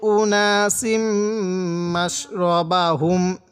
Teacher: এখানে নাকের বাসি দ্বারা গুণনা করব মিমের উপর তাজদিদ থাকার কারণে। মিম এবং নুনের উপর তাজদিদ হলে সেখানে আমাদের গুণনা করতে হবে।